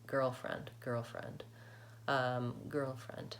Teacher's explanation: When he says girlfriend, the L sound drops off a little bit. · That L really does get kind of reduced in that context because I have so many sounds in a row. I have so many consonants.